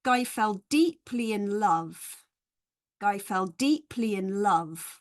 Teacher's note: we've got six syllables with the stress on three and six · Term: stressed syllables